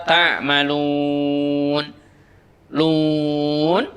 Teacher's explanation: Lun dibaca panjang sampai dengan 6 harokat. Disebut dengan mad arid lisukun.